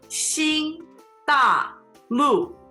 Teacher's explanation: First tone, fourth tone, fourth tone.